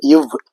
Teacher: கீழ் இதழும் மேல்வாய்ப்பல்லும் இணைவதால் பிறக்கும் எழுத்து இவ்